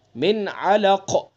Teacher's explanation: قاف کو پر پڑھیں گے اور قاف میں قلقلہ بھی کریں گے